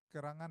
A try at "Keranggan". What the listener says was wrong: Kurang gitu. Tambah G.